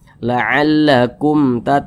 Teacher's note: pokoknya selain daripada ba dan mim maka hukumnya adalah izhar syafawi dibaca jelas karena dia izhar dibaca jelas tidak berdengung